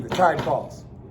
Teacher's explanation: So what happens in that line, and you didn't know when we read it the first time, but this is an iambic line, like the tide rises, the tide, and you're like, okay, we're cruising with iambs, and he hits you at the end with a single spondee, the tide falls. Okay, stressed.